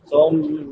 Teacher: ثم میم مشدد ہے، شد والی میم، اس پہ ہمیشہ غنہ ہوتا ہے. غنہ آواز کو ناک میں چھپا کر ادا کرنا